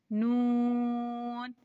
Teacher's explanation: नून जुबान का किनारा दांतों की जड़ों से लगे तो नून अदा होता है